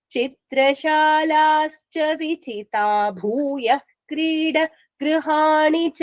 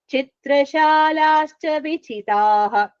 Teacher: When you join and tell, the visarga will be absent. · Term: elided